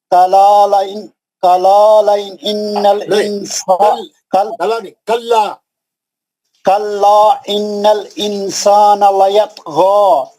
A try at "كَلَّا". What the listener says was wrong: کلا، ایک منٹ. کلا مد بھی ہے نا، کلا ایک منٹ میں آیت پڑھ کے سنا تو آپ کو اس میں 3 غلطیاں ہیں آپ کی. کلا ان الانسان لیطغی، اخفا بھی ہے نا نون ساکن کا، سین ہے.